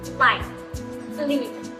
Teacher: This is the bright, clean sound we hear at the beginning of words. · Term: clear L